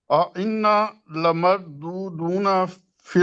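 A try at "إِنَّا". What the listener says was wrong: ان نا کو لمبا کریں ذرا.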